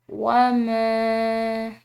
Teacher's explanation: یہاں پر میم کے بعد الف مدہ ہے، اس کو ہم ایک الف کے برابر کھنچاؤ دیں گے۔ ساتھ میں اس میم کے اوپر چھوٹی مد ہے تو اس کو مزید کھنچاؤ کے ساتھ پڑھا جائے گا۔